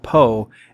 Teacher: The P sound at the beginning of the root po is what we call an unvoiced labial plosive. That's a fancy linguistic way of saying it's a sudden release of air from between your lips.